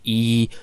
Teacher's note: E actually has the highest overtone